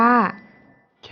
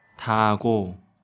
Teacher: เมื่อเป็นพยัญชนะต้นของพยางคแรกจะออกเสียงคควายแต่ถ้าหากเป็นพยัญชนะต้นของพยางค์ต่อไปจะออกเสียงกไก่ค่ะ